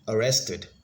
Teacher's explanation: arrested, has the stress on the second syllable, and it has 3 syllables.